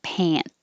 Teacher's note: you hold the T instead of releasing the airflow like pant. Just hold it, pant.